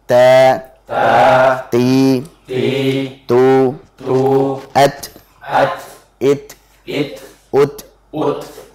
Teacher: Jadi sekali huruf ta itu huruf yang tipis, kemudian dia syiddah dan juga hams. Jadi hurufnya itu kuat, akan tetapi nafasnya bocor, nafasnya mengalir seperti itu.